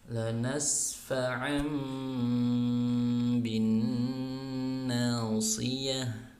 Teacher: Nah, ini tanwin tapi memang di Quran kalau iklab langsung langsung di situ ada tambahan simbol mim kecil, itu bermakna tanwinnya dirubah menjadi suara mim kemudian dibaca gunnah